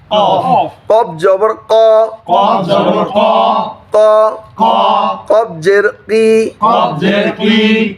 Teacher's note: তাইলে 4 নম্বর মাখরাজ, জিহ্বার দূরবর্তী অংশ উপরের নরম তালুর সাথে মিলাই, উপরের নরম তালুর সাথে মিলাইয়া একটি হরফ উচ্চারিত হয় কফ।